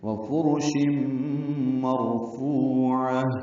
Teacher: تنوین کے بعد میم آنے کی وجہ سے ادغام ناقص ہے، غنہ ہوگا. مرفوع میں را پر ہے کیونکہ اس سے پہلے زبر ہے.